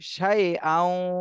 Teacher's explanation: এখানে তানভিনের পরে ঈদগামে বা গুন্নার হরফ আসছে, এজন্য গুন্না সহ মিলাতে হবে। এই ওয়াওকে হামজার সাথে গুন্না সহ মিলাতে হবে